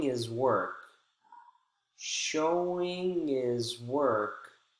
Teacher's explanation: the dropping of the h sound when those words occur in the middle of the phrase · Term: dropped h sounds